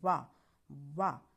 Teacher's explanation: वाह तो हमारा दांत और ओष्ठ का हमारा इसमें प्रयोग हो रहा है, इसलिए हम ये हमारा उच्चारण स्थान हो गया दंत ओष्ठ।